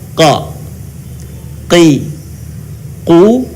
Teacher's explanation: Huruf ini keluar dengan menyentuhkan pangkal lisan kita dengan langit-langit bagian belakang. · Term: huruf qa